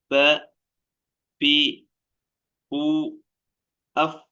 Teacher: അതിന്റെ മഹ്റജ് മേലെ മുൻപല്ലും താഴെ ചുണ്ടും മേലെ മുൻപല്ലിന്റെ താഴെ അറ്റം ദാ ഈ ഭാഗവും താഴെ ചുണ്ടും തട്ടുമ്പോഴാണ് ത